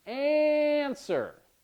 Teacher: we have the stress on the first syllable